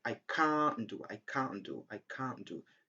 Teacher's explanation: So we don't pronounce the sound t.